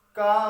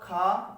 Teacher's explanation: अलप प्राण का मतलब है जब इसे का और खा बोलेंगे तो का में हमारे मुंह से हवा कम निकलेगी और खा में हवा ज्यादा निकलेगी